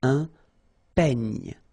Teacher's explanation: Final E, you don't insist on it. It's ny, the last sound. And then this E combination will give you this E, open E, un peigne.